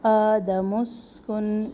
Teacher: میم پیش کو فوراً سین سے ملائے، سین میں سختی اور سیٹی